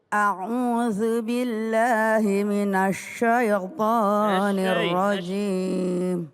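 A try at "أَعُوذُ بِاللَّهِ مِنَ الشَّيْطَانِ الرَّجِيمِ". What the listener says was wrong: Ya, minasyai, jangan maju bibirnya. Minasyai jangan. Minasyai. Syah, coba syah. Syah. Bunda Yuyun, bagus hurufnya, tinggal mulutnya agak dibuka, jangan.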